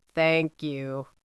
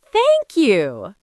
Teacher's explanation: Imagine I give you a gift and you say thank you with a flat low voice.